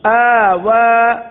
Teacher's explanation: دونوں کی مقدار ایک ہی ہے, ایک الف تک کھینچ کے پڑھیں گے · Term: کھڑا زبر